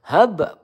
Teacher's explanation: ba sukun ya memantul qalqalah sugroh